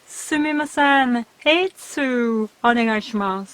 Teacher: 5 つ sounded like 3 syllables, and the first vowel was I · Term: most common mistake